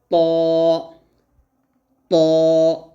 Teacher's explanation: তো তোয়া বলা যাবে না, বলতে হবে ত, ত, এরকমভাবে মোটা করে বলতে হবে।